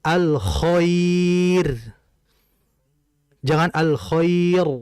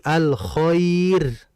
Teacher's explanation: Ro mati, ada huruf sebelumnya ya mati, ada huruf sebelumnya bertanda fathah, maka ro-nya tetap tipis.